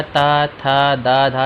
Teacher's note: तो जब हम लोग नेक्स्ट क्वेश्चन की बात करते हैं कि दांत से इसके अलावा कौन सा वर्ण और उच्चारित होता है, तो हम लोग बात करते हैं, जब हम लोग देखते हैं तो हमारा ता, था, दा, धा ये सब आते हैं। तो जो हमारा ता है वो हमारा दांत से उच्चारित होता है।